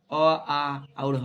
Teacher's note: अ, आ और ह इसका भी उच्चारण कंठ से होता है